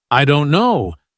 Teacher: The stress is on don't, not on I or no.